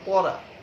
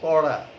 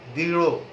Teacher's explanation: জিহ্বার অগ্রভাগ পেছনে এবং উপরের দিকে উল্টিয়ে মূর্ধাকে স্পর্শ করে এই ধ্বনি দুটো উচ্চারিত হয়। তাহলে এই ধ্বনি দুটো কিন্তু উচ্চারণ করবে আমাদের মূর্ধাকে স্পর্শ করে, সেটা মনে রাখতে হবে। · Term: মূর্ধন্য ধ্বনি